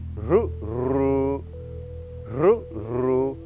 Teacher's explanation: The tongue not touching the palate but going closer.